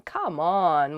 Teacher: you can also use it with downward intonation as in come on when you feel upset about something